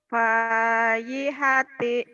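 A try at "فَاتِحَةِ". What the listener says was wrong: Kenapa payi titiknya di atas lagi? Fatihah, baca Fatihah masa payi hati. Fatihati.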